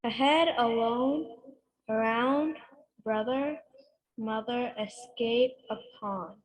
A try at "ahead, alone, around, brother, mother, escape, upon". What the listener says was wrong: Okay, so you said them very well, but I don't hear much stress. I don't hear much difference in the 2 syllables.